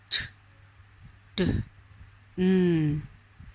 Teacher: the tongue tip touches the alveolar ridge and cuts off the airflow at that point. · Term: Stop